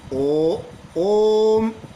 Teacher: जैसे कि आप आवाज़ दो ओ, ओम, तो ओम जब उच्चारण कर रहे हो तो ओम में जो ओ की ध्वनि निकलती है थोड़ा लंबा निकलती है, यानी 2 से अधिक मात्रा का समय लगा, इसीलिए इसको 3 के अंक यानी 3 मात्राओं के बराबर समय लगा। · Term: प्लूत स्वर